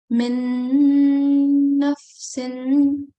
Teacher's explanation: Let's make the nasal sound, the ghunna, a bit stronger.